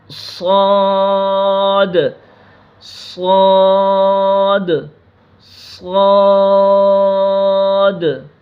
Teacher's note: زبان کی نوک اور سامنے والے نیچے کے دو دانتوں ثنایا سفلی کے اندرونی کنارے سے ادا ہوں گے